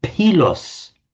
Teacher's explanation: what they heard the ancient Greeks saying was pilos, the the aspirated P